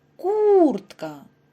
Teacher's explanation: наголос падає на перший склад